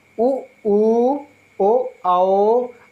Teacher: ओ उ, ओ, और दोस्तों नेक्स्ट लिखा जाए ओ और आओ। दोस्तों आप देख रहे हैं वृत्ताकार, इन्हें बोलते समय हमारा ओठ कैसे हो रहे हैं हमारे ओठ हो रहे हैं गोल गोल, उ उ ओ आओ, अर्थात हमारे ओठ कैसे हो रहे हैं?